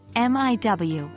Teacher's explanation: the L at the end of words can sound more like a W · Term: L vocalization